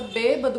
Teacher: a sílaba mais forte é a antepenúltima, a que está antes da penúltima, então ela é classificada como proparoxítona.